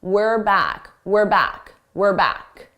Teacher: This is we are as a contraction, were. Now, notice how unstressed my pronunciation is. It sounds like were, not we're, were. This is how native speakers say it at a natural pace.